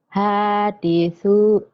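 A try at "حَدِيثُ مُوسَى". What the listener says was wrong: Hanya kan pendek, Bu. Hadithu Musa.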